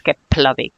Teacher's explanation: I would like to point out the F and L. If you have a combination of F and L, it's pronounced as P, as plosive.